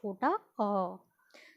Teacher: मध्य होता है बीच में, जो आपके जिह्वा का मध्य बीच का भाग है उससे उच्चारित होने वाले स्वर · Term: मध्य स्वर